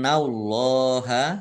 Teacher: Innallaha nun tasdid dibaca gunah atau mendengung, ditahan 2 harokat. Allahnya dibaca tebal karena harokat di depannya fathah.